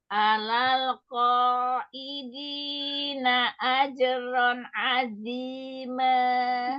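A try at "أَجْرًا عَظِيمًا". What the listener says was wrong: Ini kenapa tawasudnya jelek banget? Dibalikin. Ajron azima. Ronnya tahan dulu. Ajron azima. Iya, pokoknya namanya tanwin, mim sukun, nun sukun itu nggak boleh buru-buru, ya.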